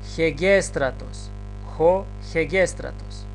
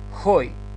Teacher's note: Имаме хо, ета, гама, епсилон, сигма, тау, ро, алфа, тау, омикрон, сигма. Но бидејќи на етата имаме спиритус аспер, пред етата читаме едно Х, значи хегестратос, хо хегестратос.